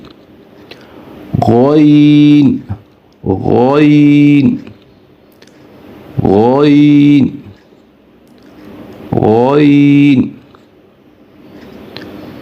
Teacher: غین، غین، یا یوں سمجھ لیں کہ ہمارا جو کوا ہوتا ہے گلے کے اندر، کوے کے پاس سے یہ آواز نکلے گی۔